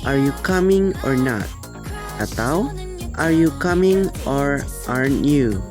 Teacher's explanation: biasanya memiliki nada yang agak tidak sabar atau agak naik